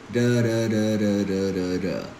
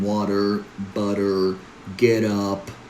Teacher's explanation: It's a very relaxed version of T, produced with the tip of the tongue. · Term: flap T